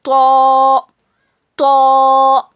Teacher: ता दाल को हम बारीक पढ़ते लेकिन तो को हम मोटा पढ़ते.